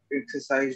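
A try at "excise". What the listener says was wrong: एक्सरसाइज नहीं बोलो, एक्साइज.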